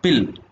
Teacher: the vocal cords are wide apart and the glottis is open so that the air passes out through it freely without any friction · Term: voiceless sounds